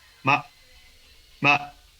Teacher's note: sin tono, que es una pronunciación muy rápida de la sílaba